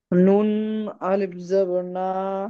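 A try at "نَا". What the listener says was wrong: নুনের টানটা ভুল হচ্ছে, নুন আলিফ জাবার না।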